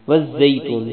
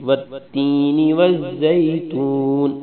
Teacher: زا پر شد ہے اس لیے زا کو دو بار بھی پڑھیں گے اور سختی سے پڑھیں گے